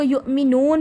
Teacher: نو کو کھینچیں، واو مدہ کا قاعدہ ہے